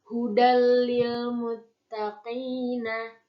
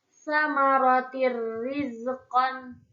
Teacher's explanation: huruf nun sukun atau tanwin dileburkan tanpa mendengung cara membacanya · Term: idgham bila gunnah